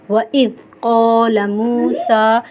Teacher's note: ذا کو ہم کئی طرح پڑھیں گے، ذا وَإِذْ نہیں پڑھیں گے، وَإِذْ نہیں پڑھیں گے، ہم پڑھیں گے وَإِذْ قَالَ مُوسَىٰ، میم ساکن سے پہلے حرف کے اوپر پیش ہے تو یہ واو مدہ ہے، واو مدہ کو ہم ایک الف کی مقدار کھینچ کے پڑھیں گے